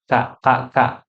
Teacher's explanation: karena dia punya sifat Hames ada udara yang harus mengalir maka dia ada pecikannya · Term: huruf Kaf